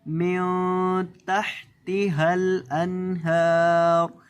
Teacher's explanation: ہا کو حلق کے بیچ سے ادا کریں گے، ہل انہار، نون کے اوپر یہاں آپ نے گنہ نہیں کرنا، اکثر لوگ یہاں گنہ کر دیتے ہیں، انہار، اس طرح سے اس کو نہیں پڑھیں گے، یہاں گنہ نہیں کریں گے۔